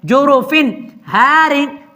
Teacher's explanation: تنوین کو بالکل ظاہر کر کے پڑھیں گے، چھپا کے نہیں پڑھیں گے، ادغام نہیں کریں گے اور اخفا بھی نہیں کریں گے، ظاہر کر کے پڑھیں گے۔ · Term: اظہار